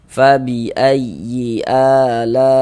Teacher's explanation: huruf ro dibaca takhim dibaca tebal sehingga dengan menaikkan pangkal lidah kita ketika kita mengucapkannya. Rbikuma ma dibaca panjang.